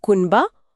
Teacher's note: ब एक द्विओष्ठी ध्वनि है। द्विओष्ठ्य मतलब दोनों होंठ।